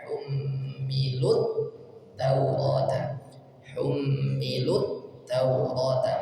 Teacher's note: Kemudian hummilu aslinya panjang, ada wawu sukun di sini, tetapi karena setelahnya huruf bertasydid maka dari huruf lam langsung ke huruf ta, tidak dipanjangkan tapi langsung dimasukkan ke huruf ta.